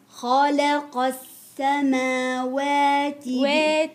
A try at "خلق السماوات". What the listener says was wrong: واتي عاملة فيها إمالة قلت لك انت السماوات